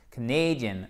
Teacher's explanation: Accent tonique sur la deuxième syllabe qui en plus se transforme en diphtongue.